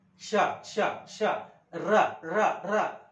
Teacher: ज्या वेळेला यांची उच्चारण होते त्यावेळेला जीभ मुरडते म्हणून आपण काय करतो त्यांची उच्चारणा मूर्धन्य करतो